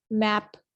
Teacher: मैप जब आप बोल रहे हैं, साउंड आप प्रोड्यूस कर रहे हैं, आपके दोनों लिप्स जो हैं वो आपस में प्रेस टुगेदर हुए हैं, मिले हुए हैं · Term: बायलेबियल